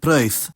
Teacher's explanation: But notice how the eth on that last one is voiceless.